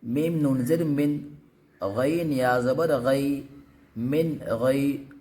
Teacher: نون ساکن کے بعد یہ حروف حلقیہ میں سے یہ غین ہے، تو ہم یہاں پہ بھی بالکل صاف پڑھیں گے۔